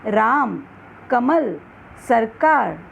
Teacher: राम में रा, कमल में म, सरकार में का में अधिक बल दिया गया है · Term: बलाघात